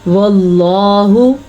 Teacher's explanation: جب اللہ کے نام سے پہلے زیر ہو یا تو اسے اللہ کا نام باریک پڑھا جاتا ہے. اللہ کے نام سے پہلے زبر اور پیش ہونے کی صورت میں اللہ کا نام پر یعنی کہ موٹا کر کے پڑھا جاتا ہے